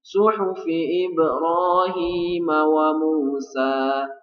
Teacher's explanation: Ada ba sukun qalqalah ya, karena sukunnya asli maka disebut qalqalah sughra